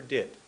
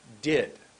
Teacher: my tongue goes up behind my teeth for did above my teeth did that that's one word at a time